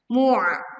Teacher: kita tekan huruf ain sukun dengan menyempitkan pita suaranya sehingga suara terdengar lebih berat